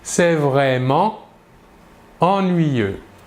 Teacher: l'adjectif ennuyeux commence par la voyelle eu ici nous voyons que nous ne réalisons pas la liaison la liaison est interdite entre l'adverbe est l'adjectif nous dirons donc c'est vraiment ennuyeux par